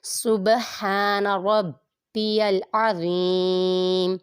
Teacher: ابھی تو زوا میں ہم لوگوں نے سین کی آواز نہیں نکالنی، ٹھیک ہے، سین کی آواز کو دبانا ہے اس میں۔ سین متحرک، با ساکن پہ قلقلہ ہوگا اور قلقلہ خوب ظاہر کریں گے یہاں پر کیونکہ با ساکن ہے۔